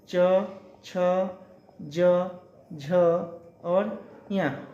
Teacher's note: ये सब कैसे निकलते हैं? तालु से निकलते हैं।